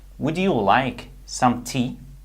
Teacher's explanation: When we have D plus Y, the result is a J sound.